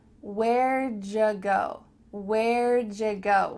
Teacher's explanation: The words where did becomes a contraction, where'd, and then the word you becomes ja.